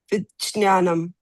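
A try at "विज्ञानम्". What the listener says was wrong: No, you still have to work on that ja sound of it. It should not be so highlighted, and it should not sound like this kind of a sound is what I'm hearing.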